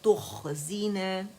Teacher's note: خوا موٹی ہے تا باریک ہے